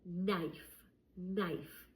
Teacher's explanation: I don't hear a K sound. I just hear the N sound. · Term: Silent K